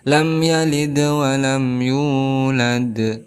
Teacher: ada huruf mad tabi'i yaitu waw, sebelumnya berharokat dhammah. Maka hukumnya sebagai mad tabi'i, panjangnya 2 harokat.